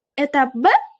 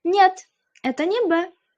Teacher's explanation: Savolni oxirini balandroq ohangda o'qib berasiz. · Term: so'roq ohangini